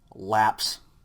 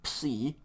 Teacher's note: psi is just a P and an S sound sounded together